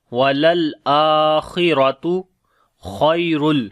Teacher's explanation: اوپر توسط ہوگا، آ کو لمبا کریں گے، کھڑی زبر ہے، خا کو موٹا پڑھیں گے، را کو بھی موٹا پڑھیں گے